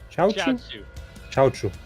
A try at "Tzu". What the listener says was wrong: It's Chao Tzu. It's like it's a T double S long S sound. like two. It's too far forward in the mouth.